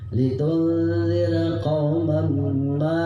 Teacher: ini ma panjangnya adalah 6 harkat panjang